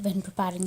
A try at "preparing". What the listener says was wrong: You say when preparing, but you're not pronouncing that P enough. When preparing for exam. So the P is a bilabial consonant, so you want to pronounce that with a lot more air.